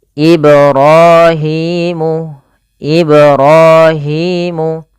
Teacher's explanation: Panjang ra dan hi harus sama, kedua-duanya hukum tajwidnya mad thabi'i · pantulkan huruf ba pada lafal kata Ibrahim, karena pada lafal ba tersebut ada bacaan qalqalah yaitu memantul